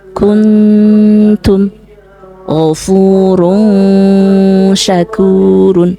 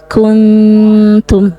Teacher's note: ketika kita mengucapkan nunnya itu sudah tidak jelas sebagai nun dan bibirnya itu sudah persiapan pada makhraj huruf berikutnya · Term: ikhfa